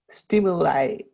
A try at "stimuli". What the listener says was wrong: Okay, that was a good I.